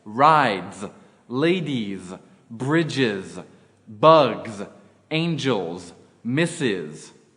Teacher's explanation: s becomes Z when preceded by a voiced syllable or the word is made plural using e s examples rides